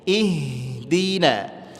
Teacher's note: ha memiliki sifat hamas, dia mesti ngalir dan enggak boleh habis suaranya. Jangan ihdi, enggak, ngalir aja lembut.